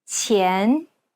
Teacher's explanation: pronounced with the tip of the tongue touching the bottom teeth, while the blade of the tongue lays flat behind the front teeth. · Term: Chinese Q sound